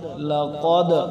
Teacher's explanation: کریں گے آگے لام زبر لا قوف دال زبر قد لقد قوف موٹا ہے دال پہ قلقلہ کریں گے